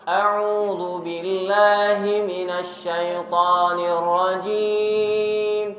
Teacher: Nada yang pertama naik, nada yang kedua datar, nada yang ketiga turun. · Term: naik, datar, turun